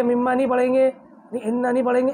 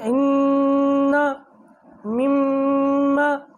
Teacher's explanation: ناک میں آواز لے کے جائیں گے، اور اس کی مقدار 1 الف کے برابر ہے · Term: غنہ